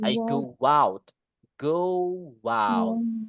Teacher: Ada tambahan suara W-nya.